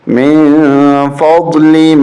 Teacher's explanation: یہاں اخفا ہوگا، من ناک سے آواز